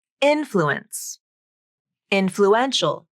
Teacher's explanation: the primary stress in the word influence is on the first syllable but when you add the ial ending the primary stress shifts to the third syllable